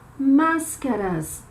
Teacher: Nós temos aqui uma palavra proparoxítona, cuja sílaba tônica, ou seja, a sílaba mais forte, é a antepenúltima. Máscaras. Última sílaba, ras, penúltima sílaba, cá, antepenúltima sílaba, mas.